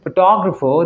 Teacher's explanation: in photographer the emphasis is on the second syllable